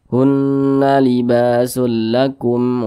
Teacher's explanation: dibaca jelas tidak berdengung dibaca pendek saja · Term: izhar syafawi